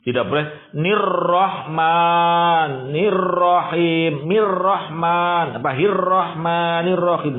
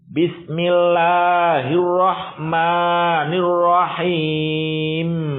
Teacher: Hirrah seketika sudah satu getaran lisannya, lidahnya diinhirofkan, ditarik ke belakang.